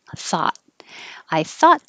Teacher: i'm going to hold my t a thought i thought so approximately i'm not releasing my t